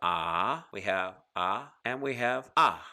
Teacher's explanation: we have the kamats which is long we have the patak which is medium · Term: medium ah in length